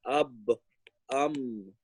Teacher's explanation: ba and mim, they both come from the lips